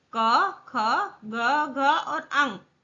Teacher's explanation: क, ख, ग, घ और अंग, यह 5 वर्ण क वर्ग में आते हैं और इसका उच्चारण करते समय कंठ यानी कि हमारे नेक का प्रयोग होता है, इसलिए इसे कंठीय वर्ण भी कहते हैं।